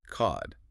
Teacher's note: Cod with the back of the tongue low.